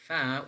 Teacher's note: we are pressing the lower lip against the upper teeth